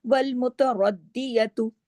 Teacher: را موٹا ہوگا، دال پہ تشدید ہے، سختی سے جڑے گا، 2 مرتبہ آواز آنی چاہیے